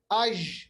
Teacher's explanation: अगर हम आज भी पढ़ेंगे आज, मिसाल के तौर पर कलकला अगर ना करें आज, आप देखिए जीम की जो आवाज है मजबूत रहती है, ये पस्त नहीं होती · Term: जहर